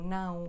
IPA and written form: nɐ̃w̃ (não)